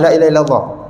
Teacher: Allah Taala susun kalimah Lailahaillallah tu tak ada lafaz pakai bibir